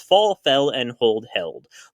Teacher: short versions switch from ah to ah-eh